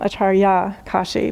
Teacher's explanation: there's a slightly long a on the last syllable